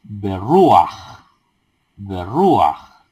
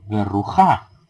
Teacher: no es correcto leer berrujá, sino que debe ser berruaj. Aj, la vocal, el pataj, se pronuncia antes que la consonante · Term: patak furtivo